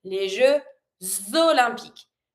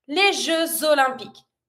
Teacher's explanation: Pronounce the X like a Z sound, and you're going to follow it with your following word. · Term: link it